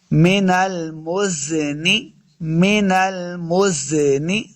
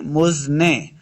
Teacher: سے پڑھیں گے، نون زیر نی، بعض لوگ پڑھتے ہیں مزنے، نے نہیں پڑھنا بلکہ نون زیر نی ہے